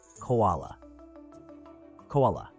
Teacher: produce a clear k sound by blocking and releasing the airflow at the back of your mouth. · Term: ko sound